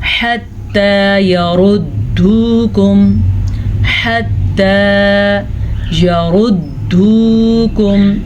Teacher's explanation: را کو پر پڑھیں کیونکہ را کے اوپر پیش ہے